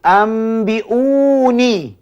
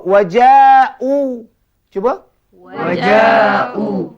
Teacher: Kita dapat juga di hujung kalimah seperti cuba wajau cuba waju >> juga mad badal. Mad-Mad ini semua dibaca dua harakat. Jangan lebih.